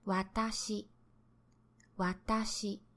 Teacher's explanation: Not dramatically, don't exaggerate. It's a subtle rise, you almost don't hear it. It sounds nearly flat, hence the term flat type. · It starts out low with wa, then gradually and slowly the pitch goes up. Not dramatically, don't exaggerate. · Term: flat pattern